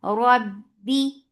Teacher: As you will touch ba, it should have shidda. There is no flow of sound. The sound the makhraj will cut off the sound.